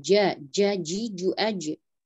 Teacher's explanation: Huruf jim makhrajnya berada di tengah lidah.